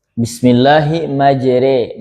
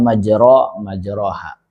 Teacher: harakat fathahnya condong ke kasrah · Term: imalah kubra